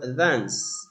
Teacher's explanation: And the word dance it is a long back a vowel.